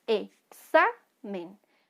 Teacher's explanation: ven que suena más fuerte la penúltima sílaba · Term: grave